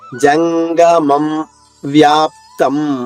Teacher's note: జ తర్వాత పెదవులు కలవకూడదు